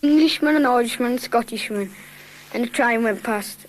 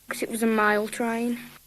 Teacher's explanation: But you've got diphthong shift, goes, trine, and mile.